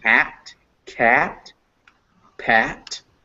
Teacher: it's in the front of your mouth but near the bottom of your mouth as well so to make it you want to open up your mouth